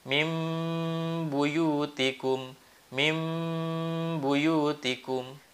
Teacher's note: Cara membacanya diubah dari tanwin atau nun sukun menjadi seperti suara mim. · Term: iqlab